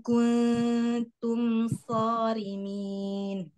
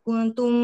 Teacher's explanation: mim sukun mim ada gunnahnya tetap tetapi tidak terlalu lama ditahan hanya menunaikan sifat bainiyah saja pada huruf mim kuntum forimin ya Jadi tidak kuntum nah tidak ditahan terlalu lama